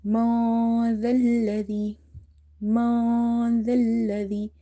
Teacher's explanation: Now here is mim, noon, fatha, ma dhalladhi. So after noon sakin, you see this is letter dal, which is from the ikhfa letter, so you will hide the noon sound. Don't try to complete it by saying min.